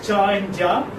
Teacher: That's there inside your mouth, and instead of releasing suddenly, you release it gradually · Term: affricates